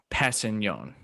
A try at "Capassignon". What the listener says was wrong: The K is pronounced. The K is quickly pronounced. Capassignon.